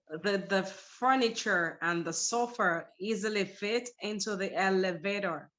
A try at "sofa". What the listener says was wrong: But this word right here does not end with an R. It's a schwa. Sofa. Sofa. Yeah, no, not so far, but sofa.